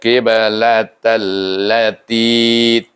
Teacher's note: Ja'alnal qiblatal lati, ti 2 harakah panjangkan. 2 ti itu panjangkan 2 harakah. Iaitu mad asli.